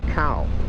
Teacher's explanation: cow with a low tone means knee